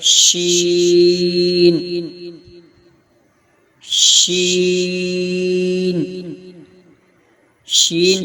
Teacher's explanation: ادا کرتے وقت زبان کا درمیانی حصہ جب تالو سے لگے تو شین ادا ہوتا ہے